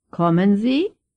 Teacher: Pay attention to the way the voice rises at the end of the question in German.